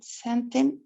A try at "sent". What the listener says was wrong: sent, con T, nada más sent.